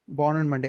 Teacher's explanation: there should not be any pause between born on and monday